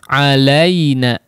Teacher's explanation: Perhatikan si huruf lin ya di sini cenderung hampir mengucapkan harakat kasrah ya. Alaina menyentuh kepada makhraj huruf ya, meskipun memang disukunkan kondisinya.